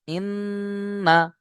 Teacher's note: নুনের উপরে তাশদীদ নুন তাশদীদকে গুন্না করা ওয়াজিব